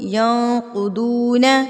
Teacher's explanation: یہاں پر قاف کو پر, ضاد کو پر